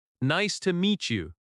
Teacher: Stress meets slightly. Nice to meet you.